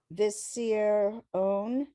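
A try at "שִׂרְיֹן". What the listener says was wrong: Yon, that yud there is gonna sound like a Y. Basir yon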